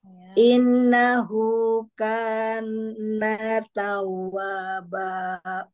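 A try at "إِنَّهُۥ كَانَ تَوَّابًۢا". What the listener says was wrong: Innahu ya innahu Nanya jangan dipanjangin, innahu kana tawwaba.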